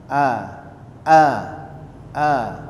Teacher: huruf alif tidak keluar dari hidung tapi dia huruf tipis